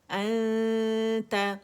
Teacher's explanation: میں نے نون کو چھپایا ہے اور کس کی وجہ سے چھپایا ہے تا کی وجہ سے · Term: اخفا